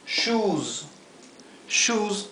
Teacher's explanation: Pero cuando la s se encuentra al final y está precedida por una vocal como es este caso y muchos otros más la s se pronuncia fuerte con el zumbido